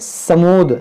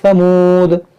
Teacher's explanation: اس کو بعض لوگ کیا پڑھتے ہیں سمود, سین سے, آپ کو نرمی سے پڑھنا ہے ثمود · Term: ثا